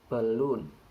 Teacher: The stress occurs in the second syllable, not in the first one.